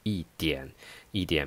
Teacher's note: it's not necessary to say 一点儿 You can omit R sound. You can say 一点一点 means a little.